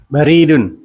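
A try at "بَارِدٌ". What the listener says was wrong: Panjang. Panjang ke atas. Antum kan pendek.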